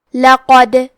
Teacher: یہاں دال کا حکم ہے قلقلہ. قلقلہ کا معنی ہے حرف ساکن کو ہلانا، تو ہم حرف دال کو ہلاتے ہوئے یہ کلمہ کو پڑھیں گے